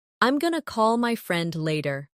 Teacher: Did you notice going to became gonna? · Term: connected speech